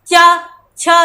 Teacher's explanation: तालु से बोलते हैं यानी च छ, तो हमने देखा जो हमारी जीभ है वो कहाँ पे लग रही है, तालु से लग रही है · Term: तालव्य व्यंजन